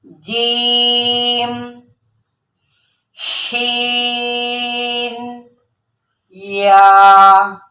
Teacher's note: जुबान का जो सेंटर वाला दरमियान वाला हिस्सा है वो क्या करेगा? ऊपर वाले तालू से जा लगेगा, तो तब जाके ये जीम, शीन और या अदा होंगे।